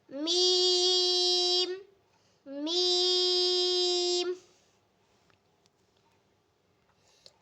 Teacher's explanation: میم کو بھی پورے 5 الف کے برابر لمبا کر کے پڑھا جائے گا، اور اس کی آواز بھی ناک میں نہیں جانی چاہیے، یہ ہونٹوں سے ادا ہونے والا حروف ہے۔